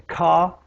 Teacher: Speakers from Australia, most parts of England, have a low degree of rhoticity